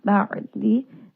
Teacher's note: Ain is going to have tawassut, roll that around in the throat. Aad, Ain is going to be a 2 count mad.